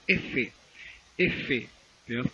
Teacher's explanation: caso los labios tocan del diente cuando digo efe efe cuesta el labio inferior toca la dentadura de la parte superior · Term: labio dentales